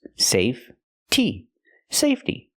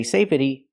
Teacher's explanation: is silent so when I change it to the word safety the E stays silent and we use a real T sound